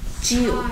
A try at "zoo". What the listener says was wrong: zoo. zoo. Zoo. 입을 벌리는 게 아닙니다. Zoo.